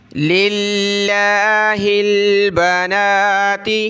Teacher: لفظ اللہ سے پہلے یہ لام پر زیر ہے, اس لیے ہم لفظ اللہ کو باریک پڑھ رہے ہیں